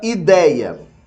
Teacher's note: ideia é na verdade formado por dois sons vocálicos esses dois sons vocálicos são uma vogal e uma semivogal